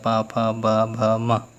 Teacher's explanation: हमारे जो दोनों होंठ होते हैं उनसे ये पा वर्ग जो है बोला जाता है। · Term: ओष्ठ